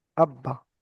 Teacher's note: প্রথমে রয়েছে হামজা, তারপরে রয়েছে বা, বায়ের উপরে তাসদিদ। তো এখানে বা দুবার উচ্চারণ হবে, দুটো বা তৈরি হলো, বা দুবার উচ্চারণ হবে, দুটো বা।